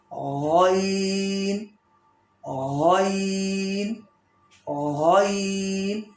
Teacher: غین کی مخرج ہے زبان کا بالکل جڑ، زبان کی جڑ، اور جو جہاں سے ہمارا منہ شروع ہوتا ہے حلق سے تھوڑا اوپر، یہ حلق جو درمیان حلق ہے اس سے اوپر منہ کی طرف، زبان کی جڑ اس سے اوپر، یعنی جو تالو ہے اس سے پیچھے.